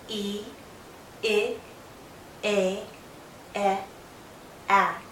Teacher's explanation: from E to A, my mouth opens more and more. My jaw lowers, but my lips are still spread out. My tongue is generally still pushed forward with the tip going down to the back of my bottom front teeth. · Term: front vowels